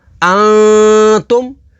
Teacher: نون ساکن کے بعد تا ہے، تا حروف اخفا میں سے تو یہاں پر اخفا کریں گے یعنی غنہ کر کے پڑھیں گے